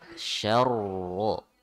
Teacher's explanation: Ro-nya tasdid ya, syarro dihentak